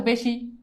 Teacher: যদি কখনো এ এর মত উচ্চারণ হয় তাহলে সেই উচ্চারণটাকে আমরা বলবো সংবৃত